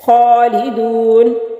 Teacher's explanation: فیہا، یا ساکن سے پہلے لفظ کے نیچے زیر ہے تو یہ یا مدہ ہے، اور یا مدہ کو کھینچنے کی مقدار جو ہے وہ ایک حرکت کے برابر ہے۔ خالدون، خا کھڑی زبر ہے، ایک الف کے برابر لمبا